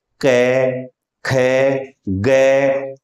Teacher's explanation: कै, खे, गे में पीछे कंठ के पास आपकी जिह्वा का स्पर्श हो रहा था। तो ये जो पूरी पंक्ति है जिसमें 5 वर्ण हैं, इन 5 में आपकी जिह्वा आपके कंठ के आसपास स्पर्श करती है, इसलिए इनका उच्चारण स्थान कंठ है।